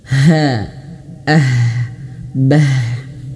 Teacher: huruf ha itu juga dia memiliki sifat hamas dan juga lawanannya dari jahr yaitu hamas dan juga dia rokhawah, dia mengalir nafas ya. Bah, mengalir nafas.